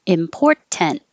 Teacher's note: hold your tongue in the t position and not release it